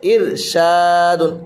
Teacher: یہاں را ساکن سے پہلے زیر ہے تو را باریک ہوگی